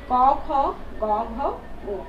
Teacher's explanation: ক, খ, গ, ঘ, ঙ, প্রত্যেকটাই কিন্তু কণ্ঠ থেকে উচ্চারণ হচ্ছে। ঠিক আছে, তাহলে এই ধ্বনিগুলোর নাম কি, কণ্ঠধ্বনি।